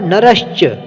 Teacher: इसमें भी सा आधा है और उसके सामने च वर्ग का वर्ण आया है, तो हमारा सा शा में परिवर्तित हो जाएगा, सा का शा हो जाएगा। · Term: शुचित्व संधि